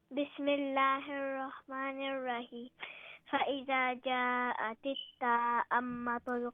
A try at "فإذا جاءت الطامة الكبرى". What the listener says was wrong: No, it's not ta'ammatul. Where is the a sound? There is no a. It's tammatul. No, not ta'ammatul.